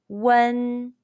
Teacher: your lips are from round to spread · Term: final one